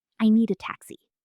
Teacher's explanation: a native speaker connects the d in need directly to the a. It sounds like one word, need a listen. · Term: connected speech